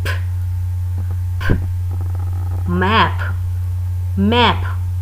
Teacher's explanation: Close lips to form line, then release breath unvoiced like p, p. First of all you have to close your lips, then release breath p, और फिर आपने release करना है अपना breath, then unvoiced p, map, clap.